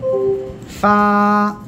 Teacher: নিচের ঠোঁটের পেট, সামনের উপরে 2 দাঁতের আগায় লাগাবেন, লাগে হালকা বাতাস বের করবেন, উচ্চারণ করবেন ফা।